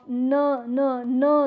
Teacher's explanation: that there is there is a release of air and and there is a closure or you can say that the air is not allowed to pass through through the oral cavity rather it finds The Passage through the nose so the examples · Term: nasal